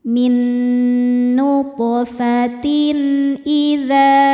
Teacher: Ada hukum izhar halqi karena ada tanwin kasroh menghadapi huruf halqi atau tenggorokan yaitu hamzah. Cara bacanya tanwin dibaca n, jelas.